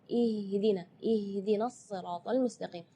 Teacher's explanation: Ya, itu tidak boleh, itu keluarnya dari dada. Sedangkan makhraj huruf H itu adalah dari tenggorokan. Jadi keluarnya tipis karena H itu termasuk huruf di antara 28 huruf hijaiyah yang paling lemah adalah huruf H.